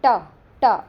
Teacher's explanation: देखो त, द, न, लेकिन ट, ट उसमें हमारी जो जीवा है वो ऊपर मुड़ रही है